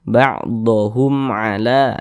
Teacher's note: Ain bukan huruf ba bukan huruf mim maka hukumnya izhar syafawi maka dibaca jelas tidak berdengung baca pendek saja ba'ohum ala Jangan dibaca ba Hum jangan dipanjangkan seperti itu jangan